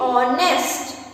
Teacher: when we are saying it, H is silent and we are saying honest